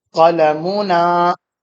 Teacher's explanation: the tanween is eliminated and it is replaced by the corresponding short vowel, which is dhamma in this example